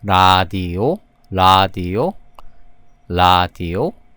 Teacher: When this consonant is in initial positions, it's pronounced like a flap R, like Japanese or Spanish